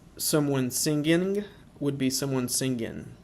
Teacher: There's also a frequent dropping of the NG, much like the American South.